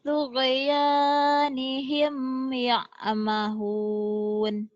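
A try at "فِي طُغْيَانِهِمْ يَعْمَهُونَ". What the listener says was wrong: Fi tughyanihim ya'mahuna. Nanya dibaca ya, lagi di latihan dibaca. Gak dibaca boleh ya'mahun gitu ya.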